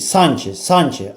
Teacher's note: A-da uzanma var, vurğu vardı.